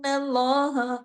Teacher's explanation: तशदीद की वजह से नून पे लंबा गुना हुआ